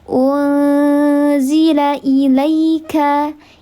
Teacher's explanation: Namanya ikhfa haqiqi awsat karena nun sukun bertemu dengan salah satu huruf ikhfa haqiqi awsat. Dibacanya disamarkan disertai dengan gunnah 3 harakat.